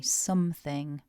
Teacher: vowel in syllable one is an uh not an O so we say something with the uh something and remember to